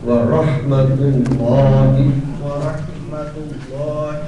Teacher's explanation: رح جو ہے حلق سے آئے